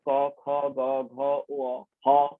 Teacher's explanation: কণ্ঠ ধ্বনি বা কণ্ঠ বর্ণ কিংবা জিহ্বামূলীয় বর্ণগুলি, জিভের মূল একেবারে ভেতর দিকে আছে, সেখান থেকে উচ্চারিত হচ্ছে